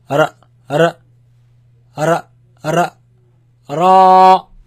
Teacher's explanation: Make it long. And this sound actually, it comes from the tip of the tongue touching the front palate roof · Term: heavy